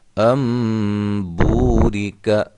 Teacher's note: یہ واو مدہ، اور حروف مدہ کو کتنا لمبا کرنا ہے؟ ایک الف کے برابر